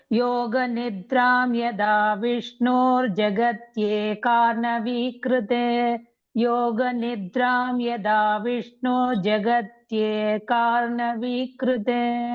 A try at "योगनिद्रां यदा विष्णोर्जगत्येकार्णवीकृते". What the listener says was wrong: Bhagini, I am not able to hear that ra sound, ear sound.